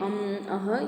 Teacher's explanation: अनुस्वार जो हैं अम, अह ये सब हमारे नासिका के नाक के उच्चारण से निकलते हैं।